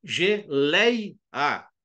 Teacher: você vê que o e e cai pro pro I né o e começa alto e cai pro I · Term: ditongo decrescente